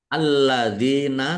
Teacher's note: Alladzina atainahumul kitaba ya'rifunahu kama ya'rifuna alladzina khasiru Alladzina, lamnya dibaca double, ada tasdidnya. Dal kasroh ya sukun, mat tobi'i, panjang 2 harokat.